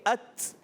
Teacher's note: یہ تا کے اندر صفت ہوتی ہے, ایک شدیدہ میموسا حرف ہوتا ہے, ات کی آواز آتی ہے, ات. سختی کے ساتھ آواز بند ہونا, پستی نرمی سے سانس جاری رہنا, یہ تا کی صفت ہے